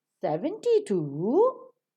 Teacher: we have given the falling tone to 70 and rising tone to 2. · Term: falling rising tone